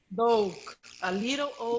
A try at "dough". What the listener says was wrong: No, dough. Only dough. You don't pronounce the GH. You say only dough. Dough.